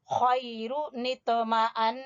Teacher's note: نون مشدد پر غنہ بھی کریں گے